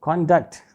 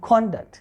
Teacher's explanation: But this word can be used as a noun and as a verb. When this word will be used as a noun in a sentence, the stress will be on the first syllable. It will be conduct.